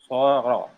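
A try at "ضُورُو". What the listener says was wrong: Bukan so. Ada titiknya. Doro.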